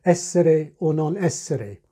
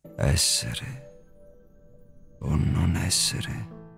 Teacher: there's usually a nice big accent on the second essere